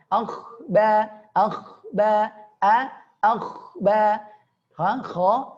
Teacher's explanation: Kho tebal ya. Tebalnya yaitu ya dinaikkan pangkal lidah. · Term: Kho dibaca tebal